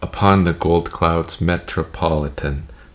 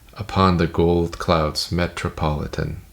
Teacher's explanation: You've got to make the met just a little bit longer or just a little bit more stressed